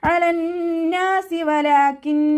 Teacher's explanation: അയിനിൻ്റെ സൗണ്ടിനെ തൊണ്ടയുടെ മധ്യഭാഗത്ത് നിന്ന് കൊണ്ടുവരിക.